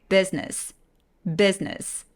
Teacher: 중간에 I를 날려버리는 거예요.